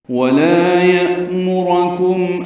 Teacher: لا الف مدہ ہے، لام باریک ہے، 2 حرکات لمبا ہے. یأمرکم میں حمزہ ساکن جھٹکے سے ادا کیا جائے گا. میم کو معروف طریقے سے جلدی پڑھیں گے، را کو پر پڑھیں گے لیکن جلدی پڑھیں گے.